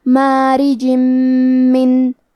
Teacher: آخری میں رے کے نیچے زیر ہے تو یہاں را کا حکم ہے ترقیق، ہمیں حرف الرا کو پتلی آواز میں پڑھنا ہے